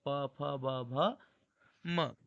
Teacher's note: ता वर्ग दंत से बोला जाता है, त थ द ध न, मतलब बिना दांत के इसे नहीं बोल सकते। पा वर्ग ओष्ठ से बोला जाता है